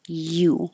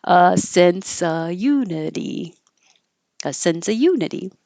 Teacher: the U in unity looks like a vowel it looks like a u but it actually sounds like a y so your tongue is starting in the Y position